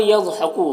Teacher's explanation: ज़ौद हुरूफ मुस्तालिया में से पुर पढ़ेंगे